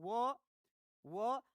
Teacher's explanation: व का उच्चारण स्थान होता है दंतोष्ठ, यानी दांत और ओष्ठ की सहायता से बोले जाते हैं